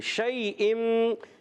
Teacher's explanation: زبان کے درمیان اور تالو کے درمیان سے شین ادا ہوتا ہے